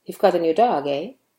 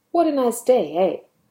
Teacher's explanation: the pitch goes up at the end of the sentence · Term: rising intonation